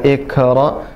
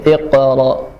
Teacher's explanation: Qa dari pangkal lidah, bukan kaf